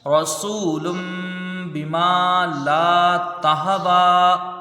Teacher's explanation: کی تنوین ہے، تنوین کے بعد با ہے، یہاں اقلاب ہوگا، تنوین کو میم سے بدل کر غنہ کے ساتھ پڑھا جائے گا ، باقی نیچے زیر ہے، جلدی پڑھیں گے، میم میں الف · گے، لا، تا کو ہاتھ سے ملا کے جلدی پڑھیں گے، واو میں کھڑا زبر ہے، اس کو کھینچ کے پڑھیں گے، ایک الف کی مقدار